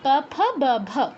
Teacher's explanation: মানে একবার ঠোঁটটা অফ হবে, একবার অন হবে, এরকম প, ফ, ব, ভ, এরকম জাস্ট। ফ বলবো না, কেউ দাঁতের ব্যবহার করব না, দাঁতের ফাঁক দিয়ে বাতাস যেন না বের হয়ে যায়। একবার ঠোঁটটা বন্ধ হবে, একবার খুলবে, এতটুকুই, এক্সট্রা কিচ্ছু করা যাবে না।